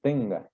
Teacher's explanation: Tenga, es tenga, el acento va en ten.